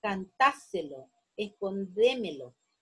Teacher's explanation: Luego están las sobredrújulas, que la sílaba tónica es la que está antes de la antepenúltima sílaba